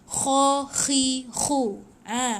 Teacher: Jangan kha. Dia macam o sikit, lepas tu dia macam menggelegak dekat kerongkong kita. Itu memang makhraj huruf kha.